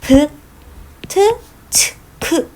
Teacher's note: 후두가 딱 긴장이 되거든요. 그리고 거칠거칠한 소리가 납니다. · 히읗은 목구멍에서 거칠거칠하게 나는 소리니까 얘네들하고 합쳐지면 이렇게 브, 트, 츠, 크 이거와 같은 유기음이 되는 것입니다